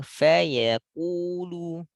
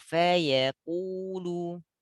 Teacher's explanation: Kepancing tebal ku. Tipis faya yang tebal hanya pada ku.